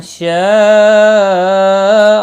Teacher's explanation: جب بھی حمزہ اسی کلمے میں آتا ہے تو وہاں پر مد متصل لگتی ہے، چار الف کے برابر کھینچ کر پڑھتے ہیں